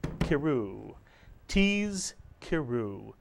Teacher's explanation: we pronounce this one syllable keru as if the schwa under the cuff is a grace note